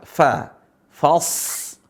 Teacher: Huruf shad tebal, tapi teman-teman sebagian karena udah tahu huruf shad ini tebal, seringkali fa-nya ikut tebal. Yang benar adalah fa-nya tetap tipis.